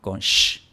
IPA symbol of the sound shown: ʃ